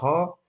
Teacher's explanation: ह वर्ण, कंठ, महाप्राण, घोष वर्ण का उदाहरण है।